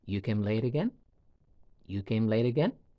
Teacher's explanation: With the rising intonation at the end of the utterance.